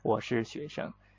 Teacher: Normally 学生 together the 生 is neutral tone.